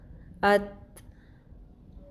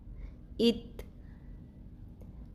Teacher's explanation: جب زبان کی نوک اوپر والے سامنے کے 2 دانتوں کی جڑوں کے ساتھ ٹکراتی ہے تو تا ادا ہوتا ہے